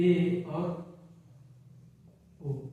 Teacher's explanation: ऐसे स्वर जिनका उच्चारण करने पर मुख द्वार आधा बंद रहे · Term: अर्धसमवृत्त